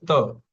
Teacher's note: The tip of the tongue touches the teeth. Just say Tu and it is touching the teeth the upper teeth.